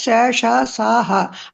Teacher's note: ఊష్మాలు అంటే ఊష్మాలు అంటే శేష సాహ అంటే గాలితోటి ఉచ్చరింపబడతాయి, గాలి రాపిడితోటి మనకి పలికినప్పుడు కూడా కొద్దిగా గాలి తెలుస్తుంది